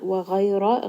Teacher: ghayn is heavy, ra is heavy. This is madleen.